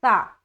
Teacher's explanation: یہ نرمی والا حرف ہے اور یہ بغیر سیٹی کے ادا ہوتا ہے